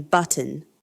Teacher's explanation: British English employs T-glottalization instead, where T becomes a glottal stop in specific positions